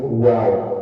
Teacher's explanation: 2 bibir yang dimonyongkan hurufnya ada 1 yaitu waw